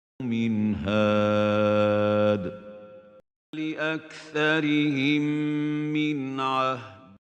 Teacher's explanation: Al-Idhar means pronouncing the noon clearly with no gunna. If Noon Sakinah or Tanween is followed by one of these 6 letters, Al-Hamza, Al-Ha, Al-Ain, Al-Ha, Al-Ghain, Al-Kha, we pronounce the noon clearly. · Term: Al-Izhar